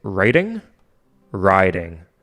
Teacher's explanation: Apparently, most Americans would pronounce the vowel sound to be the same in those two words. But with Canadian raising, we say writing, riding.